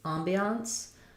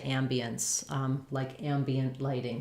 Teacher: Some people will say ambiance, more similar to the French with the ah.